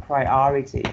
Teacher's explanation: you put like the stress on the second syllable